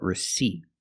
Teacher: we don't use the short I sound like this is we use the long e sound like green beans